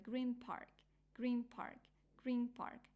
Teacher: Park but because of p is label you see p Park it's a little bit hard to combine n and p together that is why they make M sound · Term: assimilation